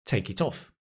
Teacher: We're linking the consonant with the vowel of the next word.